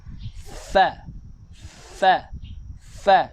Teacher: Dalam bibir ni, belakang bibir, sebutan huruf fa yang betul adalah gigi depan atas ini kena sentuh dengan bibir belakang kita